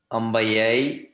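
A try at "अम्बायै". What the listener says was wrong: Ambayai. Just observe the dirgha, okay? Ambayai.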